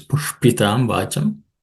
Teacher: the sh is a cerebral sh. So the tip of the tongue should point upwards.